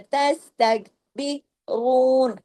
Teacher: रू के ऊपर आके आप रा को हैवी कर देंगे उसके पेश की वजह से , उसके ऊपर जो दम्मा है ना उसकी वजह से, यही